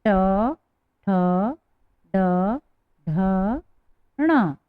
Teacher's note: जो तालु के पीछे वाला भाग होता है उसे हम मूर्धा कहते हैं। तो मूर्धा से टच होकर ध्वनि बाहर हो रही है, इसलिए इन व्यंजनों को मूर्धन्य व्यंजन भी कहते हैं।